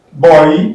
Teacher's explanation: I underline OY here because you have two sounds there, two vowel sounds there. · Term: oi